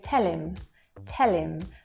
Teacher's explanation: say tell him tell him so again there that h disappears the h sound completely disappears and we connect the two words together · the h at the beginning of words tends to get lost as well